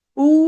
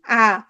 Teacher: উ, আ একদম সংবৃত থেকে একদম বিবৃত